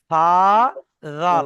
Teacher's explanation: জিহববার আগা সামনের উপরের দুটি দাঁতের আগার সঙ্গে লাগিয়ে জাল উচ্চারিত হবে। সা জাল। আপনার জিভটা সামনের উপরের দুটো দাঁতের আগায় লাগান। · তাহলে সা যেমন বলেছিলাম জিহ্বার আগা সামনের উপরের দুটি দাঁতের আগার সঙ্গে লাগিয়ে সা উচ্চারিত হয়, ঠিক অনুরূপভাবে জাল ও সেই একই রকম জিহ্বার আগা সামনের উপরের দুটি দাঁতের আগার সঙ্গে লাগিয়ে জাল উচ্চারিত হবে। সা জাল, আপনার জিভটা সামনের উপরের দুটো দাঁতের আগায় লাগান, প্রথমে ঠেকিয়ে দেন, জিভটা বের করে প্রথমে সামনের উপরের দুটি দাঁতের আগায় লাগাবেন, মনে মনে দেখেন, লাগিয়ে উচ্চারণ করবো, ওখান থেকে সরাবেন না।